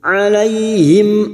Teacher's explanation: mim sukun dibaca jelas tanpa mendengung